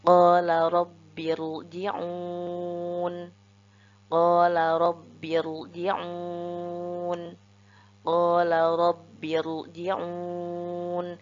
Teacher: Dan sebagai catatan, huruf ro sukun di sini harus kita baca tafkhim. Karena sebelum huruf ro sukun terdapat hamzah wasal, maka harus kita baca tebal ro-nya